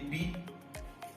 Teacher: Eléyìí ni àfipè ìró b, ètè òkè àti ètè ìsàlẹ̀.